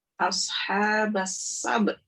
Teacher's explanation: Jadi yang selalu beliau tekankan itu sinnya itu agak dinaikkan sedikit ya, dihentakkan suaranya karena mengangkat 2 huruf mati setelah dia. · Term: sinnya itu dihentakkan